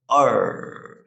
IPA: ɜ: